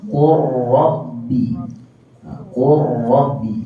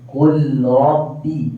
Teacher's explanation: Jadi kita tak bunyikan huruf lam, kita bunyikan terus huruf ra. Qurrabbi. Jangan baca qul rabbi. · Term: idgham